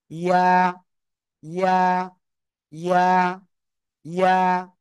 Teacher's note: উপরে তালুর সাথে লাগাবেন, লাগিয়ে এক আলিফ টেনে উচ্চারণ করতে হবে, এক আলিফ। ইয়া, ইয়া, ইয়া, ইয়া।